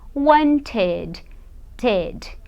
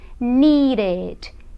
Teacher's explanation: Então, por exemplo, want, no passado eu vou dizer wanted, ted. Então, eu pronuncio o ED mesmo. Ele acaba saindo o som do E e do D.